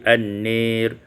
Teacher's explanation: dibaca imalah fathah nun dan alif menjadi an-nir.